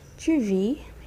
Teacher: don't pronounce the S at the end